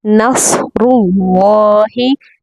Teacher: और रॉ पर पेश की वजह से हम रॉ को पुर पढ़ेंगे। अगर रॉ पर ज़ेर होती तो हम इससे पुर नहीं पढ़ते, बारीक पढ़ते।